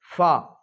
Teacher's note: اوپر کے سامنے والے بڑے دونوں دانتوں کا سرا اور نیچے کے ہونٹ کی تری، یہ فا کا مخرج ہے